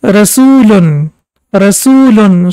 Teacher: now we can see that U sound is prolonged for 2 seconds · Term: long Dhamma